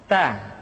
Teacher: Keluar dengan menyentuhkan ujung lidah kita dengan gusi-gusi gigi seri bagian atas. Ta. Kemudian, huruf Ta ketika diucapkan terdengar ada nafas yang mengalir, atau dalam ilmu tajwid disebut dengan sifat al-hamas.